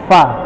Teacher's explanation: Ujung bibir atas bertemu dengan gigi bawah